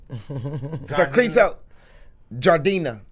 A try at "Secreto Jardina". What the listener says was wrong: Gardena. You gotta roll.